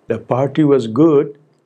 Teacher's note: for the same sentence i can say it with an undivided fall rise